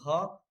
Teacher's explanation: जैसे आप बोलेंगे घ, आपका कंठ से आवाज निकलेगा